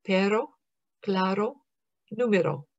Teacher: This is not so much for Spanish words that begin with an R and certainly not for the double or rolled R, but these words have the same sound as the American flap sound, but they use the letter R.